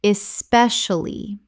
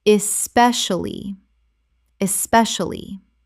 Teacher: Four syllables in natural speech, but the middle collapses considerably.